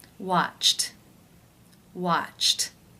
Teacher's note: the final sound of the verb in infinitive form is ch that is an unvoiced consonant sound therefore it is case one where the e d is pronounced as the t sound